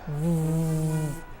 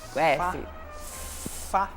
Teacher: A diferença é que um vibra e o outro não vibra.